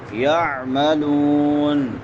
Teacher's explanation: یعملون عین وسط حلق سے اور آخر پہ مدہ ہوگا۔ افمن کان مؤمنا کمن کان فاسقا،